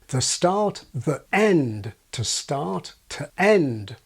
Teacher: Those schwa sounds, except in rapid speech, are usually separated from the following vowel by means of a glottal stop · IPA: ðə start, ðəʔend. tə start, təʔend